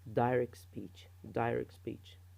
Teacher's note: the T is not pronounced